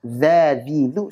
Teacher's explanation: huruf dzal itu makhrajnya adalah ujung lidah ketemu ujung gigi seri atas. Sehingga saat kita baca berharakat dza, dzi, dzu, suaranya keluar dari situ.